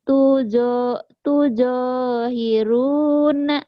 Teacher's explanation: Tunya pendek, yang panjang jo-nya doang sama ru.